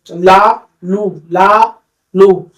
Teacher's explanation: ला का उच्चारण करते समय जीव के दोनों तरफ से वायु का निष्कासन होता है